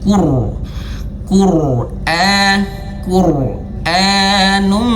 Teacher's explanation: Qura-nya awas di sini rnya tebal ya. Sehingga di sini diberikan warna coklat.